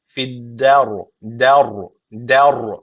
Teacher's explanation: burada ra kalın okunuyor Ama şunu unutmayın öncesindeki harfi kalın yapmıyoruz yani raı kalın yapacağız diye D'yi kalın yapmıyoruz D ince okunacak